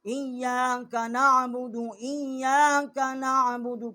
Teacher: ایاک حمزہ کو یا کے ساتھ مشدد کیا ہے، ایاک نعبد، ایاک نعبد، کاف جو ہے چھوٹی کاف ہے، جب اوپر کے تالو کی طرف زبان ٹکر کھاتی ہے تو وہاں سے اس کا مخرج ہے